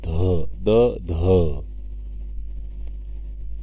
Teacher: दंत्य व्यंजन वर्ण आहेत. महाप्राण मिश्रित व्यंजन वर्ण आहे, कारण द मध्ये ह मिसळल्या